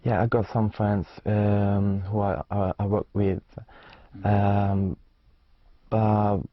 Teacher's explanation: Very clear, but again rather monotonous intonation.